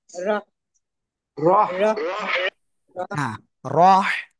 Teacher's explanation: গলাটা চেপে উচ্চারণ করতে হবে হালকা বাতাস বের হবে